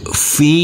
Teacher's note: huruf fa kita baca panjang dengan panjang 2 harokat.